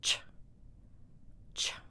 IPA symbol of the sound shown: tʃ